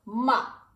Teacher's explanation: It goes down, so it's short.